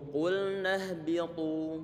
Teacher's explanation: Ini huruf ta, pengucapannya adalah ujung lidah ditempelkan ke langit-langit bagian atasnya. Di samping itu kemudian pertengahan lidah perlu untuk diangkat ke atas juga sehingga hampir nempel di bagian atasnya.